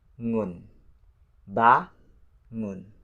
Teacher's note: Ba is the first syllable and the second syllable is the ngun. Ngun with ng sound and then close with the n sound.